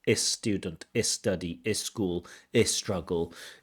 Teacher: When words begin with the letter S, they often throw in this little vowel sound.